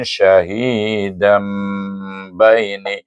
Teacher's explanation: Bacaan iqlab dengan dengung dua harakat. Syahidam, bibir tertutup.